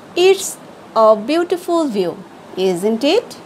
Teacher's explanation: Here my tone is falling, so it doesn't sounds like a real question. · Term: Falling intonation